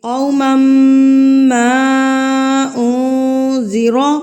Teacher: ماں کو ہم نے 3 حرکات کے برابر کھینچنا ہے کیونکہ اس کے اوپر مد منفصل ہے. مد منفصل کی پہچان ہمیں کیسے ہوگی کہ یہ مد جب آتی ہے تو اس کے بعد والے کلمے میں، یعنی کہ اس کے بعد والے ورڈ میں حمزہ آتا ہے.